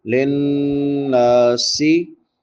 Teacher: नून के बाद अलिफ मद्दा है, एक अलिफ के बराबर लंबा करेंगे। और नून मुशद्दद है, शाद वाले नून पे गुन्ना होता है।